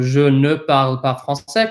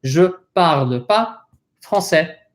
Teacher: it is very common for people to omit the ne and to not pronounce it all together